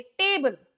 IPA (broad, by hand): eɪ